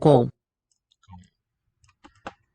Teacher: Sounds like a nasalized diphthong.